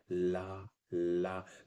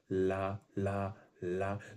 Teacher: आपकी जो जीभ है वो ऊपर मूर्धा को टच करी रहेगी, ला। अच्छा, ला बोलते समय ना ध्वनि बोलने लगते हैं, और जब जीभ नीचे करते हैं तो ला कंप्लीट होता है, मतलब ला का लंबा उच्चारण, ला ला ला, मतलब कि ऊपर डीप टच रहती है, ध्वनि अगल बगल से निकलने लगी, पार्श्व से। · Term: पार्श्विक व्यंजन